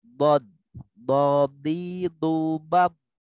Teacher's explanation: bod itu keluar dari pinggir lidah bertemu dengan gigi geraham bagian kiri dan kanan. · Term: huruf bod